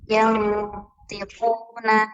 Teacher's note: نون ساكنة مخفى عند الطاء المكسورة بغنى حركتين